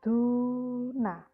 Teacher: Di sini ada huruf dal. Harokatnya adalah dhammah, kemudian diikuti wawu sukun, maka yang dibaca panjang adalah huruf dal ya, duna ya. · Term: bacaan panjang dhammah